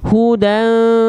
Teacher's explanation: Dibacanya samarkan plus dengungkan 2 harokat. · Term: ikhfa